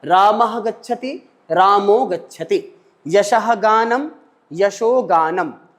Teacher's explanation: विसर्ग को ओ आदेश हो गया है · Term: उत्व